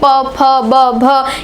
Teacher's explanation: बोलना पड़ता है ओट की सहायता से प हम लोग ओट जब दोनों ओट बंद कर रहे हैं तब हम जाके प फ ब भ ये सब बोल पा रहे हैं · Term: प वर्ग